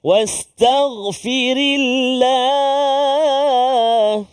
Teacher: sebelum kalimah Allah iaitulah huruf ra berbaris kasrah maka dia bunyi tipislah